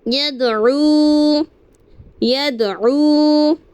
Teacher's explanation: دال ساکن ہو گیا تو ہم اسے قلقلہ کریں گے